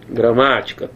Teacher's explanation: A sílaba tônica não é a primeira, é a segunda sílaba.